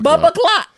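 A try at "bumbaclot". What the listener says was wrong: See, you putting a P in there. You said bumper.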